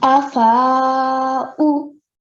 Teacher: So you prolonged the fa for about 4 seconds.